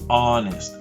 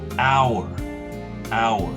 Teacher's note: So in both cases here, the H is silent. You can see the H totally disappears, and we just jump to the vowel